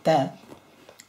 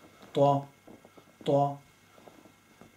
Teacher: So it's a T sound, ta, but it's round. So twa, twa.